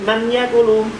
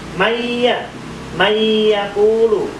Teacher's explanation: Maya langsung masuk di huruf ya dan didengungkan. Maya. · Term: idgham bi gunnah